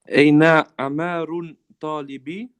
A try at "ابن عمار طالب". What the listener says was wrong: So remember, ibnu. It doesn't say aina. It says ibnu. Ibnu.